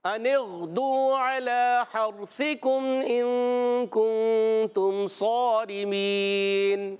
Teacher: وقف کرنے میں یا مدہ کے بعد سکون عارضی یعنی نون کو ساکن کریں گے، ہو جائے گا مد عارض